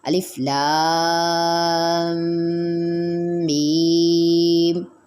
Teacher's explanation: غنہ صرف لام کے ساتھ ہی ملا کر کریں گے